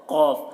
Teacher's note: زبان کی جڑ کو اوپر کے تالو سے لگائے تو قاف نکلتا ہے